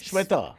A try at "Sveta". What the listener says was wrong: Sveta Yella Pregada Rao. Sveta. Sveta. Svetha.